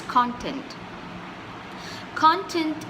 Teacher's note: when I say content I'm stressing on the first part of the word